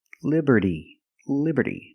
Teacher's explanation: the T and Liberty is between vowels so it's pronounced like a fast D